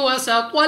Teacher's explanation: سین کو سیٹی والی آواز کے ساتھ پڑھنا ہے